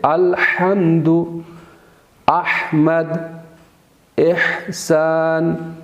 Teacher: حا کو بھی آپ نے وسط حلق سے ادا کرنا ہے